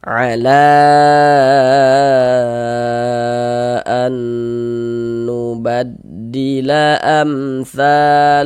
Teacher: Jadi mad jaiz munfasil panjangnya itu dibaca panjang 4 sampai dengan 5 harokat. Jadi 4 sampai dengan 5 harokat.